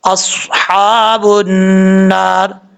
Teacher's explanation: نون کے اوپر شد ہے، غنہ کریں گے 1 الف کی مقدار. اور را کے نیچے زیر را بریک پڑا جائے گا.